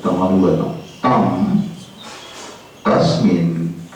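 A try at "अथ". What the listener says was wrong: Not tam, it is atha.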